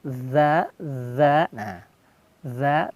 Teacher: dalam melafalkan huruf dza masih ingat sudah kita jelaskan seperti kita ingin menggigit lidah